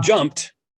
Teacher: But when I ask about the suffix in jumped, I have yet to ever meet any teacher who called it the t suffix. When you say jumped, you add the ed suffix in writing, but you add the t phoneme in speech.